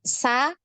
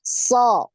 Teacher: jadi bacanya kalau tadi Sa ya tidak naik Za tidak naik ketika naik pangkal lidahnya dinaikkan so ya jadi tebal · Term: dibaca tebal